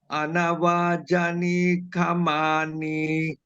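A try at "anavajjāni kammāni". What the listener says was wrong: Look at the double J. Look at the long A, the double M.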